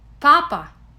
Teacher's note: P represents the consonants P and P, similar to the English P in spot. Unlike the English P, the Russian consonants have no aspiration.